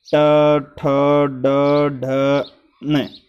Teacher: ये मूर्धा से बोले जाते हैं